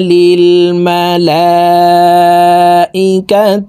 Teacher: এই লামে 4 আলিফ টান হবে।